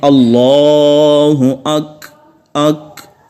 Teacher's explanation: آخر میں تھوڑی سی آواز جاری ہوتی ہے، سانس جاری ہوتی ہے تو وہ کھے کی آواز نکلتی ہے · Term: صفت ہمس